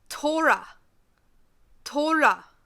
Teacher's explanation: the R and the L are combined so it has a sound like a rolling R